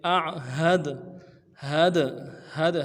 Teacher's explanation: हा को दाल के साथ मिलाना है, दाल जब साकिन हो तो कलकला होगा।